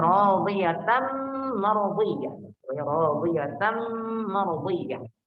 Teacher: Pada kata ta, di situ taknya harokatnya fathatain bertemu dengan mim, jadinya idgham. Jadi radiyatan mardiyah.